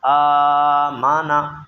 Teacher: آ کو ہم نے لمبا کیا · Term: کھڑا زبر